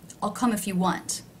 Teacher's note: if is one of the words that is not stressed it is lower in Pitch